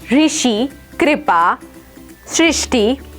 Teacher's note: इसे उत्तरी क्षेत्र में ऋ और दक्षिणी क्षेत्र में रु से मिलती जुलती ध्वनि के रूप में बोला जाता है